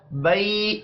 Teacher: یا لین ہے نی کو کھینچ کر نہیں پڑھیں گے